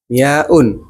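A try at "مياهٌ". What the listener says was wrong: Huruf terakhir bukan hamzah.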